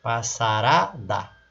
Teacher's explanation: ela ganha o sufixo ada se tornando uma outra palavra passarada a sílaba tônica não é mais o pass é o ra